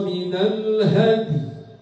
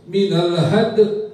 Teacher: qalqalahnya bukan hilang tetapi lemah